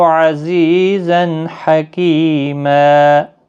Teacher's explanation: اور یہاں پر تنوین کے بعد حروف حلقی کا ہا آیا ہے، تنوین کو ظاہر کر کے پڑھیں گے، یعنی اظہار حلقی ہوگا، غنہ نہیں کریں گے۔ کی یا مدہ ہے، ایک الف کی مقدار کے برابر کھینچیں گے، اور یہاں پر وقف بالابدال ہوگا، دو زبر کو بدل کر ایک زبر کے ساتھ وقف کریں گے، ما بنے گا، الف مدہ بنے گا، ایک الف کی مقدار کے برابر کھینچ کر پڑھیں گے۔